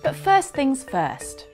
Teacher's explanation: The T on this first isn't said because it's followed by a consonant sound at the beginning of the next word, things.